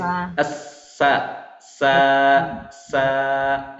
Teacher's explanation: huruf sa ini hurufnya keluar dari ujung lidah bertemu dengan gigi seri bawah. Dan memiliki sifat yang melekat sama seperti huruf zai, yaitu sifatnya sofir.